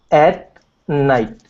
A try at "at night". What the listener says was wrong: Okay, push it even more forward than that. Okay, so almost to the base of your teeth there. So at night.